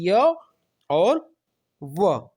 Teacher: अब इसमें क्या होता है, ये संस्कृत में य और व ऐसी ध्वनियां हैं जो न तो पूर्ण रूप से स्वर है, न पूर्ण रूप से क्या है, व्यंजन है। जब इनका उच्चारण किया जाता है तब श्वास वायु को रोकने के लिए उच्चारण अवयव प्रयत्न तो करते हैं, लेकिन वह प्रयत्न न के बराबर होता है। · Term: अर्धस्वर